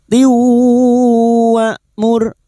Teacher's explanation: nun sukun atau tanwin yang bertemu dengan empat huruf ini ya nun mim wau termasuk huruf wau masuk dengan mendengung masuk ke huruf wau dan mendengung selama tiga harakat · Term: idgam ghunah